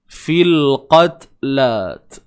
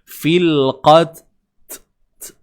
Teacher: Huruf ta bila kita matikan dia di tengah-tengah bacaan mahupun di hujung akan hadirnya sifat hams. Fil qatla. Tu sifat hams, iaitu udara yang terlepas, udara yang bebas, udara yang mengalir.